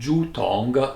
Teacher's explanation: Tong is the same other tong like the 7 Bing Cha together, so it means tube, and Zhu Tong, second tone and third tone, means actually a bamboo tube